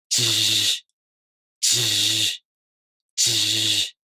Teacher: The only difference between these sounds is the tongue position. For this sound, the front part of the tongue, not the tip, lifts up to the back of the gum ridge, not the front. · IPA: [ʑ]